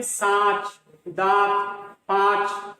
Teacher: इसका उच्चारण नाक और मुंह दोनों से किया जाता है। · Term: अनुनासिक